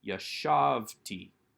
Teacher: we do not take the accent onto that final syllable but leave it on the second to last syllable